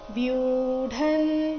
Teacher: ವ್ಯೂಢನ್ ಇಲ್ಲಿ ದೀರ್ಘ ಮುಂದೆ ಡ ಬರಬೇಕು